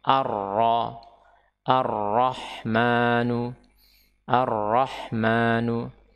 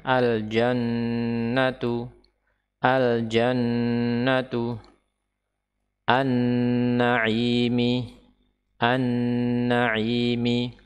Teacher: lamnya adalah lam syamsiyah. Dia tidak dibaca, tetapi yang dibaca adalah huruf setelahnya, yaitu ar-ra, ar-rahmanu, ar-rahmanu.